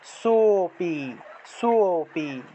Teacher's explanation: লুপ্ত অ এর পূর্বের বর্ণের উচ্চারণ একমাত্রা বেড়ে যাবে অর্থাৎ দ্বিমাত্রিক উচ্চারণটা আসবে